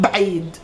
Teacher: If you want to speak in a dialect, usually we would remove this a after the b and we would combine بعيد right away.